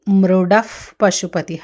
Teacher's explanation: వచ్చింది కాబట్టి ఆ విసర్గ ఉపద్ధమానీయం అంటారు. ఆ అది ఫకార శబ్దంగా వినిపిస్తుంది. పకారం ముందు ప ముందవచ్చే విసర్గ ఫ లాగా వినిపిస్తుంది · పకారం ముందు ముందొచ్చే విసర్గ ఫ లాగా వినిపిస్తుంది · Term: ఉపధ్మానీయం